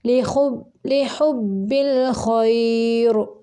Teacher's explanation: یہ ملانے کی صورت میں را باریک پڑھیں گے، اگر وقف کریں گے تو را پر پڑھیں گے۔